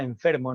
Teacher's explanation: En la realización de enfermo es un fonema labiodental.